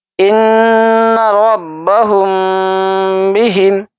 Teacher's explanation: اخفاء شفوی تجوید کے اصطلاح میں جب میم ساکین کے بعد، یہ دیکھیے میم ساکین ہے اس کے بعد با ہے، با آئے تو میم ساکین کی آواز کو ہلکا سا چھپا کر غنہ کے ساتھ پڑھا جاتا ہے